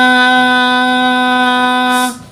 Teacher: ताज़ेर ती, नून अलिफ मद ज़बर ना, बड़ी मद है, चार अलिफ की मिकदार खींचेंगे